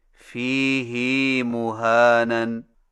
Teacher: فیہ کی ہا کو کچھ کھینچ کر پڑھیں